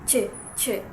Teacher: There is a stop at the beginning and a fricative manner at the end of the sound. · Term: affricate